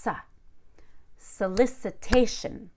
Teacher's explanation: that SO at the beginning, that's super reduced. It's just sa.